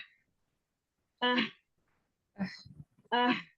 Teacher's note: इसकी जो है ना आवाज हलक में से रगड़ खाती हुई जाती है, रगड़, हलक के दरमियानी हिस्से से रगड़ खाती आवाज होती है।